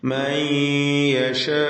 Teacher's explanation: യഹ്ദി മൻ യശാ, ഇവിടെ മൻ എന്നതിലെ സാക്കിൻ താനൂനിനെ ഇദ്ഗാം ബിഗുന്ന ചെയ്ത് യായിലേക്ക് ലയിപ്പിച്ച് മണിച്ചുകൊണ്ട് ഉച്ചരിക്കണം. മൻ യശാ, ഇതിലുള്ള അലിഫിന്റെ ദീർഘം മദ് മുത്തസിൽ വാജിബ് എന്നതാണ്. · മൻ യശാ, ഇതിലുള്ള അലിഫിന്റെ ദീർഘം മദ് മുത്തസിൽ വാജിബ് എന്നതാണ്. വഖഫിന്റെ സന്ദർഭമായതിനാൽ 6 ഹറക്കത്തിന്റെ അളവിൽ വേണമെങ്കിൽ ദീർഘിപ്പിക്കാവുന്നതാണ്.